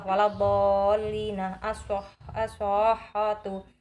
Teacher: Yang dinamakan mad lazim musaqal kalimi ialah mad tabi'i bertemu tasydid. Panjangnya 3 alif atau 6 harokat.